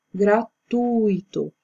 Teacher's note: Na verdade, a palavra ela não tem acento, porém, com o acento é a sinalização da sílaba tônica, ou seja, aquela que aparece mais na hora da fala, na hora da pronúncia. Só que aqui a forma correta na pronúncia é o tu, que é a sílaba tônica.